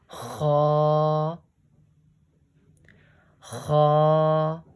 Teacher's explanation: It is read from the top of the throat.